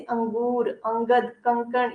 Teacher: अनुस्वार, अनुस्वार क्या है? अनुस्वार जिस वर्ण के उच्चारण में हवा केवल नाक से निकलती है उसे अनुस्वार कहते हैं।